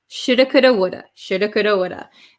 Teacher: difficult um i should have studied i should have studied so we often say shoulda woulda coulda instead of should have could have would have